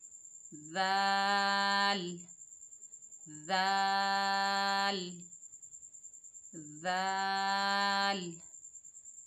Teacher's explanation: ज़ाल की अदायगी में ज़बान की नोक को सनाया उलिया के अंदरूनी किनारों से लगाएं। जहां से हमने सा को अदा किया है वहीं से हम ज़ाल को भी अदा करेंगे।